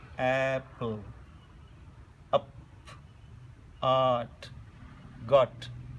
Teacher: the mouth is fully open here when you pronounce these, fully open, and you pronounce these vowel sounds from the bottom of the mouth.